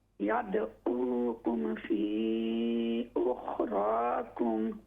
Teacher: रा को मोटा कीजिए फुल माउथ से